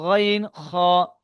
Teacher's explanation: ছোট্ট আলজিভ যেখানে আছে সেখান থেকে উচ্চারণ হচ্ছে